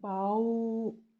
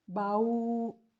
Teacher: یعنی اس کی مثال ہے کہ با کے اوپر فتحہ ہے پلس واو ساکن ہے تو اس کو پڑھیں گے باؤ۔ اس کو بو کر کے نہیں پڑھنا پاکستانی طریقے سے، بلکہ اس کو معروف طریقے سے پڑھنا ہے